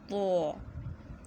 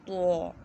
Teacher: زبان کی نوک جب اوپر کے 2 دانتوں کی جڑ سے لگے تو ادا ہوتا ہے تو